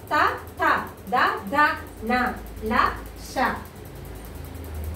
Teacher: దంతాల సహాయంతో పలుకుబడే అక్షరాన్ని దంత్యాలు అని చెప్పేసి అంటారు.